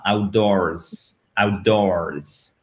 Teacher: on n'oublie pas le S à l'écrit qui nous donne un Z à la fin